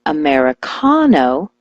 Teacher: switch the stress to the ca